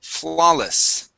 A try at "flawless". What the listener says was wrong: instead of flawless adding the stress at the end uh stresses at the beginning